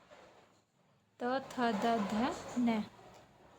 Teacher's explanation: त वर्ग में आते हैं जो हमारे होते हैं दंती व्यंजन